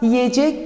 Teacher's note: e ünlüsünün, e geniş ünlüsünün i dar ünlüsüne dönüştüğünü görmek mümkün